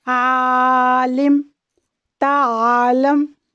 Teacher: یہ حلق کے درمیانی حصے سے ادا ہوتا ہے